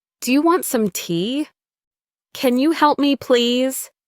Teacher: When we ask questions, our voice usually goes up at the end. That's a rising intonation.